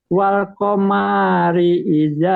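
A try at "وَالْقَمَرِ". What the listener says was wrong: Jangan wal qamari. Enggak ada, mimnya enggak panjang. Wal qamari.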